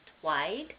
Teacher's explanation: So if a child said slide and they went twide, both the S and the L are substituted with a T and a W